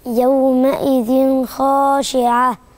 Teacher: فده من ضمن أحكامه هو والنون الساكنة ورايا حرف من حروف الإظهار، يبقى التنوين حيبان عشان وراه حرف من حروف الإظهار، يبقى مش هعمل هنا غنة. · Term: إظهار التنوين